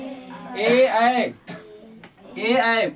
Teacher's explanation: ए ऐ बोलेगा तो जीबा ऊपर में सटेगा ना इसलिए ए का उच्चारण हो गया कंठ और ताल